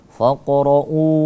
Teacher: Faqra'u, ada pantulan dikit karena di situ qalqalah sughra. Faqra'u, mad badal ya, di situ dia semacam mad badal, syabih badal.